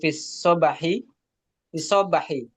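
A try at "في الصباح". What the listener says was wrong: Fis sabah. Baknya jangan ditasydid. Sabah.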